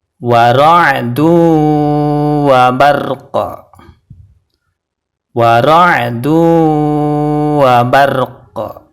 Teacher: Di sini huruf qalqalahnya adalah qaf. Dan ketika diwaqafkan, qafnya harus dipantulkan.